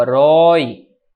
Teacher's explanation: Sim, é uma oxítona. A sílaba tônica é a última